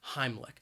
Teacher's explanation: And I think that second syllable, even though it's spelled with a CH, it's not a ch sound. It is more of a k sound.